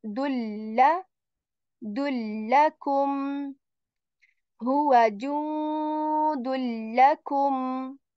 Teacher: The rule says whenever after noon sakin or tanween there comes any letter from the six yerm loon letters, we do idgham, which means I'm assimilating the sound and saying dulla dullakum huwa judullakum.